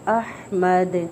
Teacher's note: دال پہ قلقلہ ہو رہا ہے کیونکہ اسٹرانگ قلقلہ ہوگا